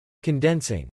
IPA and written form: kɑndɛnsɪŋ (Condensing)